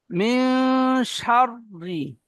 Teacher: নুন সাকিনকে একালি পরিমাণ গুণনা করে পড়তে হয়, একে ইকফা বলে। তাই নুন সাকিনের পরে এখানে শিন এসেছে, ইকফার 15টি অক্ষরের মধ্যে শিন।